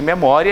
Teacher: ditongo encontro de vogal e semivogal é oral porque você pronuncia sem auxílio das fossas nasais é só pela boca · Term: ditongo oral crescente